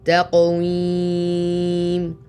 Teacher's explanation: Here the qaf has qalqala or a bounce.